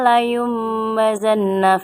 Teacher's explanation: cara membacanya mendengung membentuk huruf Mim